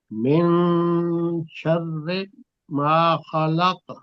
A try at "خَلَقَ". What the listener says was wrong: خو کو موٹا کریں، خلق، خلق،